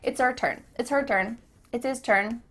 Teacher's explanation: the H at the beginning of his and her is cut off we don't do this all the time but it does happen